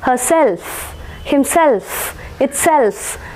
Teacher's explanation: stress will be marked on the suffix